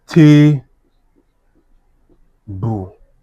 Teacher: since it's a noun and it's a disyllabic word, I will stress the first syllable.